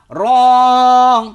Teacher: র জিহ্বার আগার পিঠ তার বরাবর উপরের তালুর সঙ্গে লাগাইয়া র